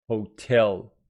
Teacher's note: the pronunciation of hotel with the stress on the second syllable